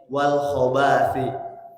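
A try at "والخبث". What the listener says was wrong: Baknya pendek, wal khobasi pendek.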